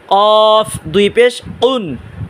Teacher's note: কফ মোটা আওয়াজে উচ্চারণ করবেন যেমন জিহ্বার গোড়া তার বরাবর উপরে তালুর সাথে লাগাইয়া